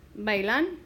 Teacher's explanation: the vowel pair together makes one syllable and it makes one sound. And that's because the strong a overcomes the weak e.